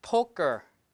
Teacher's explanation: the stress is poke right so p is aspirated G no stress so no aspiration just a k unaspirated K